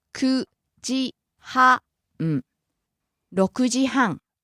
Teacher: starts low, rises on the second syllable, the ku, stays high until the final syllable where it drops again